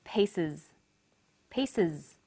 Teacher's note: the S on the end is pronounced Z because it followed an S sound